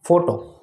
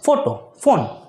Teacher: તમારા ઉપરના જે હોઠ છે એ નીચેના દાંતને અટતા નથી પરંતુ બંને હોઠ છે એ ભેગા થઈને સાઉન્ડ કરે છે